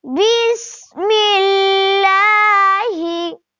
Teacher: لفظ اللہ کلام سے پہلے زیر والا حرف آیا ہوا ہے، اس لیے یہاں پر لفظ اللہ کلام کو باریک پڑھیں گے